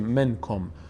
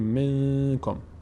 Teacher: نون از بینی ادا میشه با مقداری مکث روی تلفظ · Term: اخفا